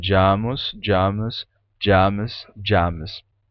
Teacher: um enfraquecimento uma modificação na sílaba átona do final que tem um som de u né jamus ele vai ficar